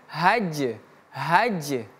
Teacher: jimnya mati maka terdapat sifat qalqalah. Qalqalah itu artinya memantul.